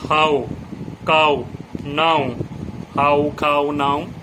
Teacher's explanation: এবার ও ডব্লিউ যদি থাকে তাহলে আ ও উচ্চারণ হয়, বাংলা আ আর ও এই উচ্চারণটা হয়।